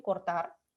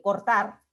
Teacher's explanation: En la palabra cortar, yo puedo pronunciarla así como vibrante simple, cortar, como un vibrante múltiple